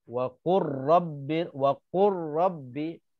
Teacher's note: lam dimasukkan ke dalam huruf ro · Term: idgham